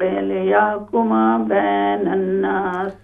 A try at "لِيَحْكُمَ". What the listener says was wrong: یہاں پر دیکھیں، ایک تو ہا کو کلیئر کریں، لِيَحْكُمَ لِيَحْ، اور دوسرا بینا نہیں ہے، با یا زبر بَي، بَيْنَ النَّاسِ لِيَحْكُمَ بَيْنَ النَّاسِ